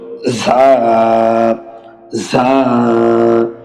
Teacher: জিহ্বার আগা সামনের নিচের 2 দাঁতের আগার দিকে লাগিয়ে একালিপ টেনে পড়তে হবে।